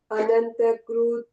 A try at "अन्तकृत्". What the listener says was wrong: अनंत नहीं है, अंतकृत। अंत अंतकृत कांत गु कांत